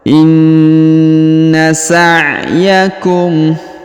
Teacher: Huruf nun sukun berharokat tasdid, maka ditahan dan ditekan 2-3 harokat ya.